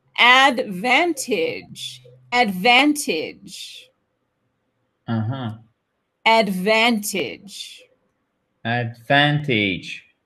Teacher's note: The stress is on the second syllable, right?